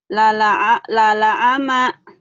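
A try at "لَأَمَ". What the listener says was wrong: Ya, jangan ke ain, ke alif. Ama. Ama.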